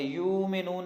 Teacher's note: اور اس طرح اس کے بعد یؤمنون میں حمزہ ہے، حمزہ کے اوپر شد ہے، جزم ہے، یہاں پہ جھٹکے کے ساتھ پڑھیں گے، یؤمنون نہیں ہوگا، یؤمنون ہوگا۔